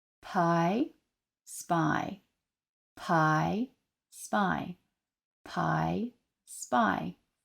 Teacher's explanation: you can really feel that aspiration when that P is at the beginning but it's not aspirated in the same way when it's after the S like in spy